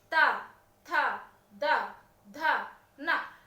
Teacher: तवर्ग का उच्चारण करते समय आप देखिएगा आपकी जिह्वा दांतों पर प्रेशर मारती है। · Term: दंत्य